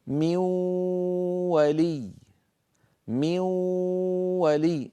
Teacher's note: انتقلنا من الميم إلى الواو مباشرة، ولم يبق من النون إلا غنتها، لأن نصف النون اللساني قد تحول إلى واو فصار النطق من ولم يبق من النون إلا غنتها كما أسلفت، بل وطولنا تلك الغنة حتى صارت غنة كاملة.